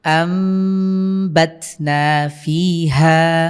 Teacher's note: এরপরে দেখুন কি আছে, আমবাতনা ফিহা, এখানে নুন সাকিনের পরে বা এসেছে, আমরা এটাকে মিম দ্বারা পরিবর্তন করে পড়ব। আপনারা খেয়াল করছেন এখানে কিন্তু আমি মিম পড়ছি, নুন সাকিনের বদলে মিম উচ্চারণ করতে হবে।